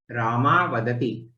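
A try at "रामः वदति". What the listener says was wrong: Ramaha Vadati. Ramaha. Ha should be heard.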